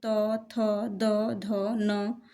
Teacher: त वर्ग के सभी व्यंजन जो हैं वो दंत्य व्यंजन कहलाते हैं।